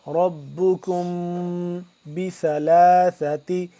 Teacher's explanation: ساکن کے بعد جب با آ جائے تو اخفا ہوتا ہے، یہاں پہ ہم اخفا کریں گے ناک کے اندر لے جا کر ، ربکم بثلاثت، سا زبر سا، یہ سا زبر سا دونوں